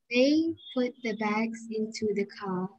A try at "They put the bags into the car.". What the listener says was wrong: Very good. Teruskan.